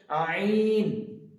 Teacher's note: তো আইনটা বের করার সময় আমাদেরকে একদম কন্ট্রোনালি শেষ যেখানে কন্ট্রোনালি শেষ থেকে একদম ভিতর থেকে বের করে নিয়ে আসতে হবে আইন যেন এটা মুখ থেকে না হয়। আমাদেরকে চেষ্টা করতে হবে একদম আইনটা যেন নলির ভিতর থেকে একদম কন্ঠনালীর শেষ থেকে উচ্চারিত করতে পারি